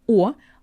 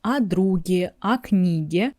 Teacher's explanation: And prepositions never take the stress. As you know, unstressed о in Russian makes a sound а. · when I say it separately, just о, I say clear о. But when I move to examples and when I say о друге, о книге, it becomes а.